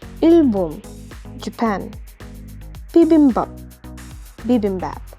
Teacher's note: P, Ch, T, K are going to be voiced. So technically, they will be pronounced as B, J, D, G.